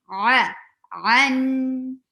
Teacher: Circle your lips well. And squeeze your throat well for to say ain.